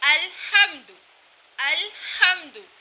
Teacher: ہم یہاں پر ہا کا دھیان رکھیں گے کہ ہم نے اسے حلق کے درمیان والے حصے سے ادا کرنا ہے